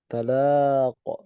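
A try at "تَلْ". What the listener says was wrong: Tal. Tal. Dimatikan saja. Tal.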